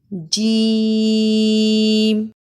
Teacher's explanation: जबान का दरमियान और इसके मुकाबिल तालू के मिलाप से अदा होता है